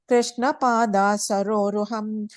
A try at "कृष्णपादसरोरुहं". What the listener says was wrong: And the first line, Krishna Pada. Second time you said Pada, just Pada.